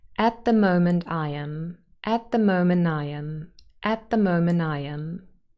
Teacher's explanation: It's faster to just go from the n to the I straight away. And so very often that final t is dropped here. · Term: elision